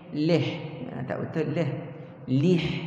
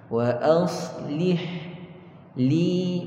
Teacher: Lam bawah li, bukan lam bawah le.